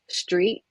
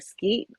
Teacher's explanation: a lot of times the K is substituted for T